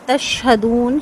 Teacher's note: شین کی سیٹی جو شور ہے وہ واضح ہوگا، تفشی کہتے ہیں اس کو